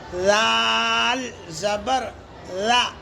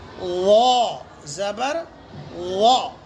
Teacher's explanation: جیسے لال زبر لا باریک ہے، وا زبر وا موٹا ہے، دونوں میں بالکل فرق ہونا ہے۔